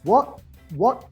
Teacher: no lo largo, no lo dejo salir, eso es un partial replacement, un glottal reinforcement